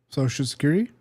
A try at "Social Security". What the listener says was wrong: I'm telling you, there are more syllables in it than that. You said Social Security.